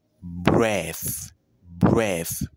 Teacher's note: Ça veut dire que nous prononçons le mot sans vibration. On doit pas avoir une vibration au niveau de la gorge. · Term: voiceless sound